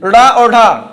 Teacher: उत्क्षिप्त व्यंजन जो है जीभ को ऊपर उठाकर झटके से बोला जाता है। जैसे जीभ को ऊपर उठाते हैं झटके से बोलते हैं, ड़ा और ढा, तो देखिए जीभ क्या हो रहा है, लड़ रहा है आपके शरीर के अंदर, लेकिन ऊपर उठने के बाद बोला जा रहा है ड़ा और ढा, ठीक है।